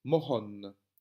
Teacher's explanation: On verra un peu plus dans la leçon suivante que le H a une valeur très forte en wallon de Liège, puisque c'est un H qui nous vient du germanique et qui doit se prononcer avec une aspiration. Donc, je dois prononcer mes deux O, ça donne mohon, avec des O brefs, O et pas O.